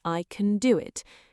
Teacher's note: Can strong form rhymes with man. Weak form sounds like can barely a vowel at all.